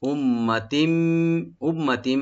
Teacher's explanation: উম্মাতিম, উম্মাতিম, হামজাকে right দিয়ে, মিম মুশাদ্দাদ এখানে ওয়াজিব গুন্না, একালে পরিমাণ গুন্না করে আমরা মিমটাকে পড়ব। উম্মা, তবে টান হবে না।